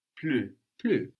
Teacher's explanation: Now plus is the same word in French, only we will have the U sound like in tu, like in you, which is tu, and we know that the consonant on the end of the word isn't likely to be pronounced